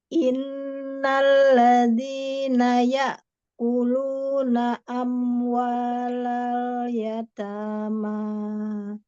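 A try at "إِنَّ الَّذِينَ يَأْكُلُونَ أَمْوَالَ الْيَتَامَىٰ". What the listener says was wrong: Jadi kita tuh kebiasaan aja sih agak manjang dulu gitu. Harusnya langsung hep gitu ya. Langsung takep gitu kurang lebih. Innalladzina ya'kuluna. Nah, kita kan enaknya innalladzina ya, gitu kan? Nah, ini jadi itulah artinya syiddah ya. Langsung masuk.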